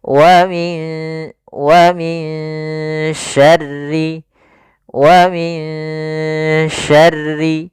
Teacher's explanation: Wa min syarri, wa min syarri, ya, ditahan dulu ikhfa-nya, ditahan dulu gunnahnya, ya, sambil disamarkan ke shin dan ditahan gunnahnya.